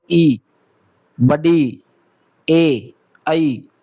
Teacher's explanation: वाले स्वर भाई जैसे बोल के देखो ई बड़ी ए आई तो आपका जो जीभ वाला आगे का भाग है वो नीचे दांतों को लग रहे हैं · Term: अगर स्वर, अग्र स्वर